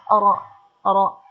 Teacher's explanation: inhiraf ro cenderung suara ro dari ujung lidah ke arah tengah lidah